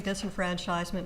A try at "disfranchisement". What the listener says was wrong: You add an extra syllable to historians refer to it as disfranchisement.